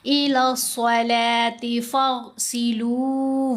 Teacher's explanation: صاد، غین دونوں کو ہم نے موٹا پڑھا